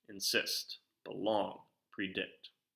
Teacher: both syllables are obviously pronounced but there's more emphasis being placed on that second syllable · those are all examples of iambic words where that second syllable is getting stressed